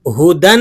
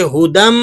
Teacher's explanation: اولئک علی ہدم، ہدم، آپ نے یہاں پر ادغام مع الغنہ ادا کرنا ہے۔ یہاں پر آپ دال کا میم میں ادغام بھی کریں گے اور اس کو غنہ کر کے بھی پڑھیں گے۔